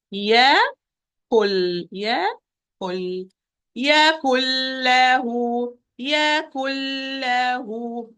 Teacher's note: Again, what I'm going to do, I'm going to move from the kaf with dhamma to the pronunciation of lam with shadda directly because I don't have noon anymore because it is fully merged into lam. Fully merged, that means it is not here anymore.